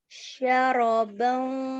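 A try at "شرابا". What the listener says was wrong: Syaraba panjang.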